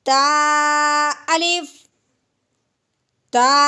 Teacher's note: ता को हमने क्या करना है कि सिर्फ एक अलिफ के बराबर लंबा करना है